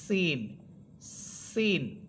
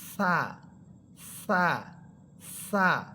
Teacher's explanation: সিন হরফটাকে ঝিঝি পোকার মতো আওয়াজ করে পড়বেন সিন, সিন। আর সা হরফটা দেখেন নরম উচ্চারণ হবে সা, সা, সা, কিন্তু সা হরফে বাতাস বের হবে সা।